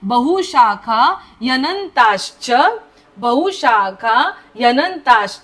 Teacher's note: नुसता ह नाही बोलायचा आहे बहुशाखा हु पहिला उकार आहे